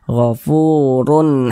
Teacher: dibaca tkhim dibaca tebal nah sehingga ini huruf-urnya kita tebalkan apaangk lisan kita naik terangkat ke atas kita tebalkan huruf rnya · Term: dibaca tafkhim, dibaca tebal